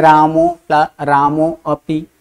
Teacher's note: है यानी और उसके पहले रामो में में अ है तो अ और उ दोनों मिलकर ओ हो गया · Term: संधि